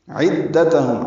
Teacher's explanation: تا باریک ہے، ہم میں اظہار شفوی ہے